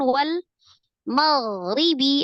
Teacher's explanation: Wal maghribi ada huruf ghain sukun. Sifatnya huruf ghain itu tetap dialirkan ya, walaupun dia termasuk huruf yang tebal, tapi dia roghah ya.